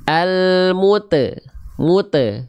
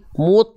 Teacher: banyak orang melafalkan pantulan huruf tho itu pantulannya tipis padahal huruf tho termasuk ke dalam huruf yang tebal Maka jangan dibaca gini almute mute enggak mute tapi Mut angkat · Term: huruf tebal